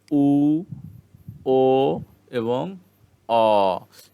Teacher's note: এবং পশ্চাতে যেটি আছে যে 3টি উ, ও এবং অ, এটি পশ্চাতে। এই 3টি উচ্চারণের সময় জীবের অবস্থান হবে পশ্চাতে, মানে পশ্চাৎ স্বরধ্বনি বলে জীব পিছনের দিকে, অর্থাৎ উঁচু বা নিচু হবে।